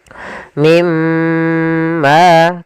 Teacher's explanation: nun sukun bertemu dengan huruf mim cara membacanya masukkan nunnya ke huruf mim dan kemudian ditahan dengan gunah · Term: idgham bi gunnah